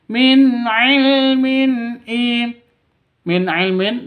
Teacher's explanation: nun mati bertemu dengan ain izhar halqi, tidak boleh sentak, tidak boleh didengungkan.